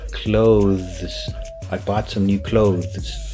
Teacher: So you would have to use the TH sound, but the voice one.